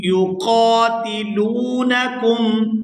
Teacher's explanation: فی سبیل اللہ الذین یقاتلونکم، یقاتلونکم، یہاں لام کو واو ساکن کے ساتھ ملائیں گے تو کھینچ کر ادا کریں گے کیونکہ یہ واو مدہ ہے